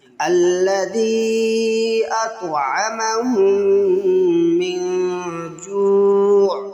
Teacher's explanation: الذي میں دال کے بعد یا ہے، یا کے اوپر مد، اس کو کھینچیں گے